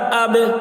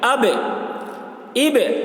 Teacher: با کی آواز ٹکرا رہی ہے، اسی کو قلقلہ کہتے ہیں